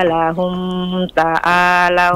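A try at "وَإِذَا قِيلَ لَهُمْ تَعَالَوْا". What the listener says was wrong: Jangan ditahan mimnya. Itu mim sukun ketemu huruf ta, enggak boleh ditahan. Bukan lahum ta'a, lahum ta'la, lahum ta'alau.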